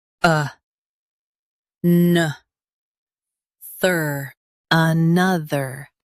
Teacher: Focus on uh and stress nuh.